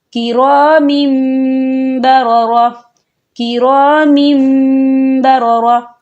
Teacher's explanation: ہم یہاں تنوین کو نہیں پڑھیں گے، ہم پچھلے میم کو جو ہے اگلے میم کے ساتھ ملا کر پڑھیں گے